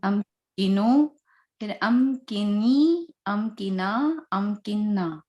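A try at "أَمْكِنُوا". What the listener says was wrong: Excellent. Excellent.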